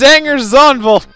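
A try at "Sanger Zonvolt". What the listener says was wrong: It's not Zanger, it's Sanger!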